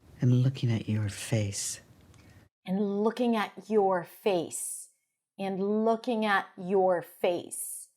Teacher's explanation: So I would probably stress your face and looking, right? And reduce, schwa.